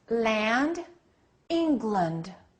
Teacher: why did I change the vowel because of the importance of the rule of stress and reduction in English